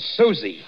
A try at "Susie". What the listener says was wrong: Susie, you make it so it rhymes with floozy. That is not nice.